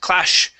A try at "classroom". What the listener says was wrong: this is going to be a regular s sound class classroom